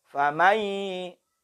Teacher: Ketika nun sukun bertemu ya. Nunnya dilebur. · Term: dengan dengung